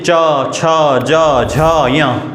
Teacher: वायु संघर्ष करके निकल रही है बाहर · चा वर्ग को हम स्पर्श संघर्षी व्यंजन भी कहते हैं।